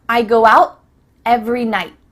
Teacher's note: make the T sound, but no air goes through, so it's just stopped at the top of your mouth